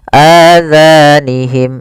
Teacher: suara mim yang pertama masukkan kepada mim kedua dan ditahan. Masukkan mim kedua, ditahan suara gunnahnya. · masukkan mim kedua ditahan suara gunahnya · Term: idgham mim, Idam Mimim